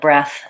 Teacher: breath, my breath, the noun, has a voiceless TH. Sounds like breath, same sound as in teeth and both, etc.